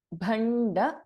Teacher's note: ಭಸ್ ಎ ಮಹಾಪ್ರಾಣ and then we have ಣ and then ಅಲ್ಪಪ್ರಾಣ ಡ · Bha is a Mahaprana, and then we have Na, and then Alpaprana, Da.